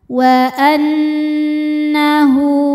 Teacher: Nun tasydidnya dihukumi dhunah musyaddadah karena nun bertasydid. Cara membacanya berdengung. tahan dengungannya kurang lebih dua harakat. Wa annahu hu hukumnya mad silah qasirah karena ada ha damir yang sebelum dan setelahnya bukan huruf mati ya dan setelahnya bukan hamzah bukan a i atau u. · Cara membacanya berdengung, tahan dengungannya kurang lebih 2 harokat. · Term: gunnah musyaddadah